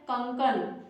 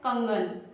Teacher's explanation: क अघोष है और ग जो है वो घोष है · तो यहां पर भी क जो है वह ग में परिवर्तित हो गया है। यानी अघोष जो है वो घोष में परिवर्तित हो गया है। तो ऐसा जहां पर भी परिवर्तन होगा अघोष जब घोष में परिवर्तित हो जाएगा तो उसको हम लोग घोषकरण कहेंगे।